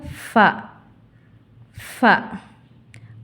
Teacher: மேற்பற்களின் ஓரம் கீழ் உதட்டின் உட்பகுதியை தொடும்பொழுது ஒலிக்கப் பெறுகிறது